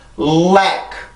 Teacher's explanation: 혀를 이용해서 치조를 눌러주고, 그러고 나서 혀의 양옆으로 나오는 그 공기를 흘려보내면서 만들어내는 소리였었는데, 이 L 발음의 음절의 시작일 때는 준비 동작이 여기까지 뛰기 위한 그 준비 동작이 바로 혀를 눌러줄 때 강하게 더 눌러주고 내가 나오는 공기를 더 세게 만들어주면 돼요. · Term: 치조 유음